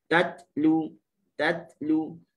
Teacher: Nak bagi tahunya angin pada huruf ta ni sikit sajalah. Okey. Dan dia tidak dicampuri dengan suara. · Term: fakut taskin